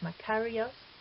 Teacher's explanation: In a word like Makarios, we see the accent on the antepenult. Ka is the antepenult, Ri is the penult, and Os is the ultima.